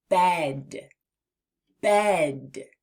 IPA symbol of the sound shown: ĕ